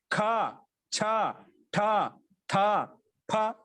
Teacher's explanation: కొంచెం ఎక్కువ శక్తితో చెప్తాం కాబట్టి వీటిని మహాప్రాణాలు అంటాం.